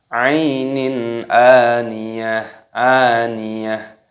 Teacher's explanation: Kasroh tanwin bertemu dengan huruf hamzah alif, dibaca idhar halqi, dibaca jelas. Dan di sini hamzahnya dipanjangkan.